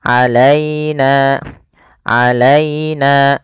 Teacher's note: Alaina, alaina. Dan sempurnakan di lafal ya-nya, jangan sampai terdengar huruf e. Misalnya alaina, alaina, tapi dia terdengar dengan i.